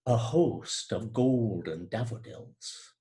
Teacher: The same thing happens, I think, in this line, a host of golden daffodils. One vowel is being repeated, that long middle O, in host, golden, and even daffodils